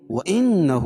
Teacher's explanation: نون مشدد غنہ ہوگا